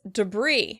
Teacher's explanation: We're stressing the word on the second syllable.